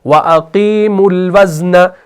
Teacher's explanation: جب یہ حرف مدہ ہے تو ہم اسے گرا دیں گے, تو ہم اس کو گرا دیتے ہیں, تو یہ بنتا ہے وَأَقِيمُوا الْوَزْنَ. تو ہم کیا کرتے ہیں, میم کو براہ راست آپ لام کے ساتھ ملاتے ہیں